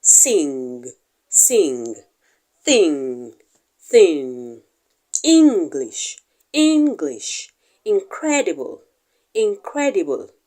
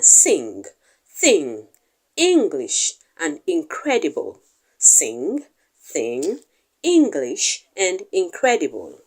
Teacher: the sound is pronounced somewhere at the back of the mouth with the Vellum lowering down to block the flow of air and then the the air is redirected through the nostrils to